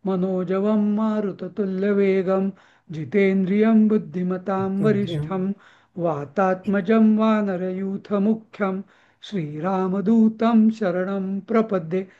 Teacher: सगळ्या अनुस्वराला मी म अर्धा म केलेला आहे